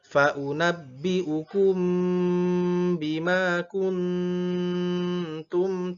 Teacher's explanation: ikhfa hakiki harus dengung, nun sukun bertemu ta.